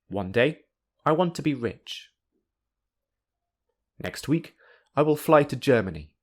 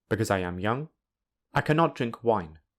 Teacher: In this first part, the intonation rises. Then, the intonation falls in the second part of the sentence. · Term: rising intonation